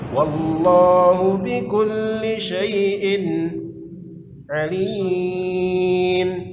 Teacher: Tanwin berjumpa dengan ain, itu izhar, dibaca jelas. Wallahu bikulli syai'in alim, itu mad arid disukun.